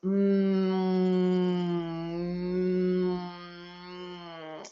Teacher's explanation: So we're going to make a like a humming sound with maybe an ng, like a a yum, tasty, So to change from the M sound to the sort of ng sound, I'm changing my tongue inside my mouth.